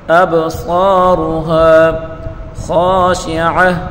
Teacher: صاد را دونوں کو پر پڑھیں گے